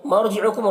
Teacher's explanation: را ساکنہ سے پہلے زبر ہے، را کو پر پڑھیں گے